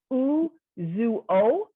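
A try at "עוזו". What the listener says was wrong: No, it's just uzo. So this is a dagesh hazak again. uzo. Because otherwise we'd have, oh my gosh, we'd have uzuo.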